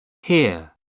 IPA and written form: hɪə (here)